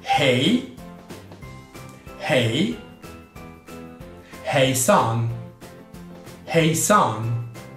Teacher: La H in svedese va pronunciata sempre, è aspirata come in inglese.